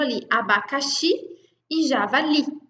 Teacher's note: Na própria pronúncia, a gente já consegue identificar que a última sílaba é a mais forte.